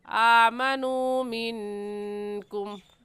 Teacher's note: आमनू में भी वाव मद्दा है, क्योंकि वाव साकिन से पहले पेश है, तो इसे भी एक अलिफ की मिकदार खींचेंगे। आमनू मिनकुम, नून साकिन के बाद हुरूफ हल्की में से कोई लफ्ज़ नहीं है, इसलिए नून साकिन पर गुन्ना करेंगे।